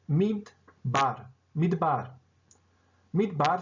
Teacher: eu digo para vocês que a sílaba tônica desta palavra é a última. Tá? Portanto, a pronúncia completa desta palavra é midbar.